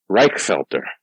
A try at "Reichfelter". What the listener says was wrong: There's no T in there. Reich.